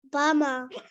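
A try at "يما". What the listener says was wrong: Oh, it's not a ba.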